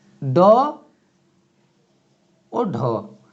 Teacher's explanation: इनके उच्चारण में जिह्वा ऊपर तालवे पर लगती है और लुढ़क करके नीचे आती है। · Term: उत्क्षिप्त